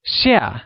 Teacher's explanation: spoken in the falling tone or the fourth tone